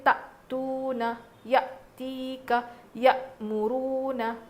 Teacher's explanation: اگر حمزہ پر جزم ہو تو ہم جھٹکا دے کر پڑھیں گے، کسی اور پر نہیں پڑھیں گے، صرف حمزہ پر.